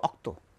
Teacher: রংপুরের আঞ্চলিক ভাষা আরেকটা শব্দ, তারা রকে বলে অ, যেমন রক্তকে বলবো অক্ত।